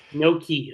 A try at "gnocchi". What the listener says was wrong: But with a nya at the beginning.